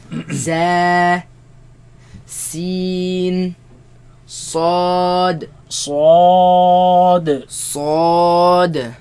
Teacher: They come from the tongue placed behind the bottom teeth.